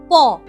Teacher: দেখো ঠোঁটটা জুড়ে গিয়ে তারপর খুলে গেল আবার। তাহলে এই যে জুড়ে গেল, শ্বাসবায়ু কিন্তু কিছুক্ষণের জন্য পুরোপুরি আটকেছে, তারপর ঠোঁটটা খুললো, তখন তুমি ধ্বনিটার উচ্চারণ করতে পারলে।